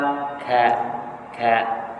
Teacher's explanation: Kalau kita nak sebut huruf ka ada tertahan atau tersekat suara kita di makhraj kaf, iaitu sebelum sedikit daripada makhraj qaf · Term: syiddah